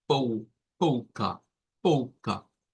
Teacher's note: siendo la sílaba tónica la pou